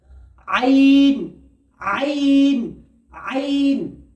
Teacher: আইন বার হয় কণ্ঠনালী অর্থাৎ এই গলার মাঝখানের অংশ থেকে